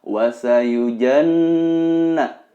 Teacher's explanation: Ini adalah gunnah, harus dibaca 2 atau 3 harokat. Ditahan dan didengungkan, terasa mendengung di area hidung atas.